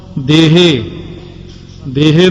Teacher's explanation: ਦਦੇ ਦੀ ਲਾਂ ਹੀ ਲੰਮੀ ਹੋ ਜਾਂਦੀ ਤੇ ਹਾਹੇ ਦੀ ਸਿਹਾਰੀ ਆਪਣੇ ਆਪ ਹੀ ਅਡਜਸਟ ਹੋ ਜਾਂਦੀ